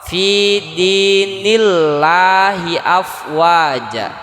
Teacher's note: lam lafaz jalalah itu dibaca tipis. Nah, dibaca tipis atau istilah tajwid itu tarkik. Ketika lam lafaz jalalah atau lam yang ada dalam lafaz Allah posisinya setelah harkat kasroh.